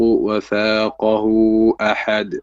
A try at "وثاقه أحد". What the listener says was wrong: وثاقه أحد. Again مد منفصل here.